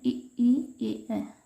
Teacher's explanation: पहला है अग्रस्वर। तो जिन स्वरों के उच्चारण में जीवा के अग्रभाग का प्रयोग होता है उसे अग्रस्वर कहते हैं